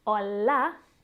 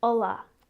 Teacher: we call this the dark L, and it happens low down in our throat. Oh, not on the tip of our teeth, like we would do in English.